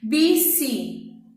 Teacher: o clé é a mais alta de todas e é a penúltima, porque vem antes da última, então é paroxítona.